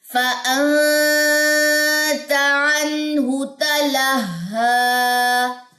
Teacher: اور ہا کے اوپر کھڑا زبر ہے وہ لمبا ہوگا